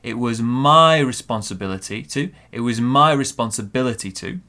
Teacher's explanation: we have a small stress on the I in responsibility